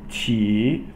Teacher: Qi, third tone, that's a falling and then rising.